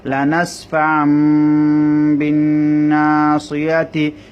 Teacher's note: তাহলে দেখুন তানবিনটা মিম হয়ে গেছে লানাসফাম হয়ে গেছে লানাসফাম বিন্না সিয়াতি মিম নুন জের মিন বা আইন জবর বা